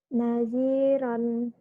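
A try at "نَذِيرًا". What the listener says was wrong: Yang panjang dinya.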